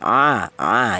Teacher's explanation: Huruf ain yaitu berasal dari tenggorokan bagian tengah